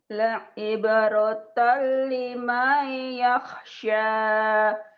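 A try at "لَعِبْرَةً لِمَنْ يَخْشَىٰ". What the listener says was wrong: Kurang nyamber. La'ibratan la'ibratan liman yakhsha.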